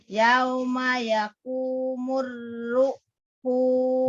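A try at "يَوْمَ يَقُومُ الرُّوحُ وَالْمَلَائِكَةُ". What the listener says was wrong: Jangan ditekan. Jangan ruhu. Ruhu wal matobi'i. Jangan ditekan.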